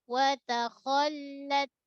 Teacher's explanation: Kho tebal jangan jadi wato. Ta nipis.